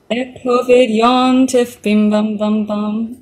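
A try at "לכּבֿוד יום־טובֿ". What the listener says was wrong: Can you put a little bit in there as if you're pronouncing the D as a D?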